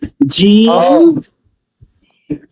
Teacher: জিমটা জিহ্বার মাঝখান চেপে উচ্চারণ হবে